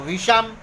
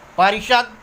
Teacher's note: अब दंत श का मूर्धन्य श में परिवर्तन होता है। यदि आ के अतिरिक्त किसी अन्य स्वर के पश्चात श आने पर दंत श का मूर्धन्य श हो जाता है। जैसे वी तो वी स्वर है लेकिन इकार है, यहाँ आ और आ के अतिरिक्त कहा गया है तो वी जोड़ शम तो विषम।